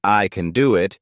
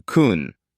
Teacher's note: For example, the word can in I can do it is usually reduced to something closer to kun, where it sounds softer and shorter